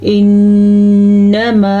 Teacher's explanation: نون کے اوپر آ گئی ہے شد. شد پہ پیدا ہوگا غنہ